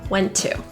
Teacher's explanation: The T's in went and to are linked together, pronouncing it just once.